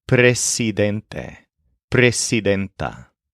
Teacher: Make sure to keep the S hard and unvoiced when you pronounce this.